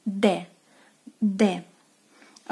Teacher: D is more of a harder one, D. D. Your tongue have to be more forward to your teeth.